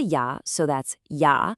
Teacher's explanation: Don't let the visual of the letter J trick your mouth into that hard English "J" sound. Keep it a soft Y.